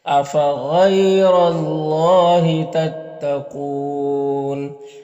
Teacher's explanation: अल्लाह के लाम से पहले रॉ के ऊपर ज़बर है तो अल्लाह के लाम को पुर पढ़ेंगे · यहाँ पर वाव मद्दा है और वक्फ़ की सूरत में मद्द आरिज़ वक्फ़ी होगा